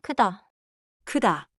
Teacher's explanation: Now 으 — keep the lips flat, tongue high and central.